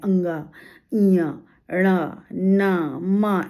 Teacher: सब के उच्चारण में नासिका से ध्वनि निकलती है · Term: नासिक्य व्यंजन